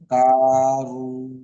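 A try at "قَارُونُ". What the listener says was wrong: কা নয়, এটা বড় কপ, ঠিক আছে? কলকলার শব্দ, এখানে আগে হ্যাঁ, এই যে করুনু, কপটা টান হওয়ার কারণ কি?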